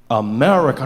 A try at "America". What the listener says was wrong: No, the husk. Bring the husk back.